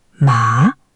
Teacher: Third tone, dipping down and up.